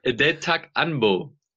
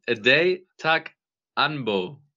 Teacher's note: Die vorletzte Silbe mit dem an, nicht un.